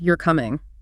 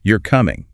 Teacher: If the pitch of your voice falls at the end, you're coming. It's a statement of fact. But if you raise the pitch at the end, you're coming, it suddenly becomes a question.